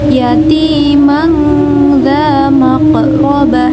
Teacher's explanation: Sedangkan menurut istilah yaitu pengucapan non mati atau tanwin apabila bertemu dengan huruf ikfa maka dibaca dengan suara antara idhar dan idgham dan disertai dengan gunnah